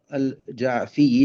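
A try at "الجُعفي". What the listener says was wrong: جیم کے اوپر ہم پیش پڑھیں گے الجعفی.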